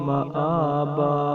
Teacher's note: حمزہ کھڑا زبر ہے، اس کو ایک الف مقدار لمبا کریں گے